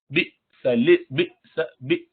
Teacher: یہ حمزہ کے ساتھ جھٹکا آتا ہے ہلکا سا